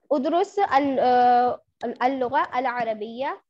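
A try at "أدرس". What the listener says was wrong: بیٹا ادرس ادرس الف کو زبر دیں. ادرس اللغة العربية.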